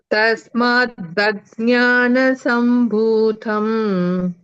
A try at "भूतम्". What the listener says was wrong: Bhutha, no? Bhuta. Ta is alpa prana.